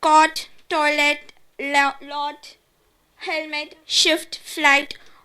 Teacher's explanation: T is a glottal stop at the end of the word.